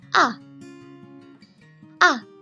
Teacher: start high and goes downwards. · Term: Fourth tone